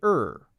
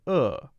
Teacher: we tend to use the r sound slightly more or at least stronger than in the uk we say er whereas in the uk they might say uh